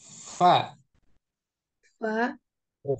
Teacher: Fa itu makhrajnya asyafatain, dua bibir syafatain fa, ya kan, itu Namun, makhraj fa.